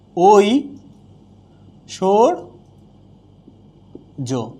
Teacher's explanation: ওইয়ের উচ্চারণ হচ্ছে যে ও আর হ্রস্বইকার